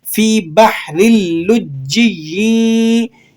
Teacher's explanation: تنوین کے بعد حروف یرملون میں سے لام آ جائے تو یہاں پر ادغام ہوگا، ادغام بلا غنہ، ادغام بلا غنہ، بغیر غنے کے آپ ادغام کریں گے